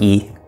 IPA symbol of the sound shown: i